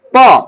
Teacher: শুধুমাত্র দুই ঠোটকে ব্যবহার করে ধ্বনিগুলো উচ্চারিত হচ্ছে। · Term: অষ্ঠ ধ্বনি